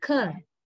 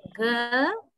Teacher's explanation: K, voiceless. Voiceless. And G, voiced. G, you feel a vibration there, right?